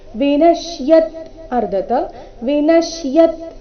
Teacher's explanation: ಶ ಅಧಿಕ ಯ ಸೇರಿ ಸಂಯುಕ್ತಕ್ಷರ ಆದ ಕಾರಣನ ಮೇಲೆ ಆಘಾತ